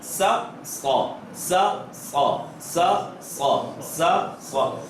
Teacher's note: सीन को पढ़ते हुए जबान फ्लैट रहेगी, स्वाद को पढ़ते हुए जबान गोल होगी। जबान गोल होगी, होंठ गोल नहीं होंगे। अगर होंठ गोल हुए तो वाव का इजाफा हो जाएगा, जो कि गलत है, जो कि बिल्कुल गलत है।